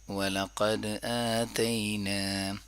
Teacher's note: وَلَقَدْ آتَيْنَا، وَلَقَدْ، قاف کو پر پڑھیں گے، دال میں قلقلہ کریں گے